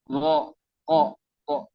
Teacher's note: Ro itu tidak monyong ya. Setiap pelafalan vokal o itu tidak monyong.